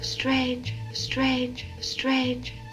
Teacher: you hear how there's no r in strangers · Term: non-rhodic accent